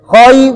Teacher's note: تو اس میں ہم نے را کو موٹی پڑھنی ہے، کیوں؟ پیش ہے.